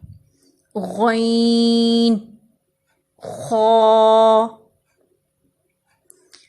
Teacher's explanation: ابتدائے حلق سے، یعنی حلق کے پہلے حصے سے، یہاں سے غین اور خا ادا ہوتے ہیں۔ غین، خا۔